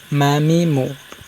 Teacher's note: দুই ঠোঁটের শুকনো অংশ থেকে উচ্চারণ করবেন